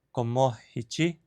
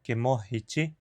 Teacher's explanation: A estratégia é mudar a primeira vogal da palavra, empurrando-a em direção a um i, que é a versão vocálica da consoante ya.